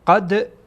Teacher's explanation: دال از حروف قلقله هست، قلقله میکنیم چون ساکنه. قد گویایی که یعنی دال یک حرکت میدین، قبلا هم بیان کردم قلقله را.